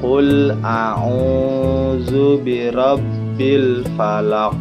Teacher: setelah huruf ain ada huruf waw yang diberi tanda sukun, itu tanda baca mad dan harus dibaca 2 harokat panjangnya.